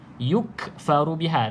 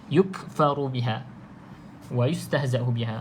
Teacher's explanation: Okey, kemudian kalau tuan-tuan dan puan perasan pada ayatillah yukfaru biha, ada macam seolah-olah lantunan kan, yukfaru biha, tetapi itu kita bukan panggil qalqalah ataupun kita tak panggil lantunan. Sebab ada sifat hamas pada huruf kaf ni